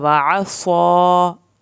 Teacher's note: आइन को हल्क से पढ़ना है, स्वाद को खींचना है